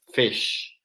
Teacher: cuando pronunciamos la I corta rápido, al ser una I corta, es posible que la podamos escuchar como una E muy suave, pero es una I